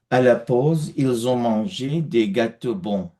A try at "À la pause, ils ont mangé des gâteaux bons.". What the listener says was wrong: Very nice. Which option shall I choose? The pronunciation was perfect.